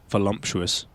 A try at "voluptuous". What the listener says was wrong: Not volump. That sounds like something from the Dr. Seuss book.